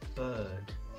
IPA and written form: bɜːd (Bird)